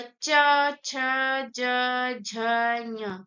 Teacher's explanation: तालु पे जा रही है हमारी जीभ, हमारी जीभ कहाँ जा रही है? तालु पे एकदम जा रही है इसको बोलने पे, इसलिए इसको हम तालव्य बोलेंगे, ठीक है।